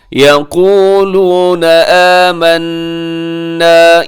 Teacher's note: یہاں نون مشدد ہے تو یہاں غنہ کیجیے گا۔